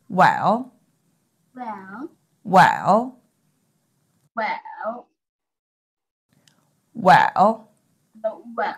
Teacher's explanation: tone and for this tone i will go like this ah the third tone starts off in the lower range of your speaking voice drops a little and then rises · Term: falling rising tone